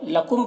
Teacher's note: لکم کے میم میں اظہار شفوی ہو رہا ہے، اس میم کو جلد پڑھنا ہے